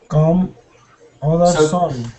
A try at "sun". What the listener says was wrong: So when we say sun, try not to say son, but more sun. And try to get more up. Sun.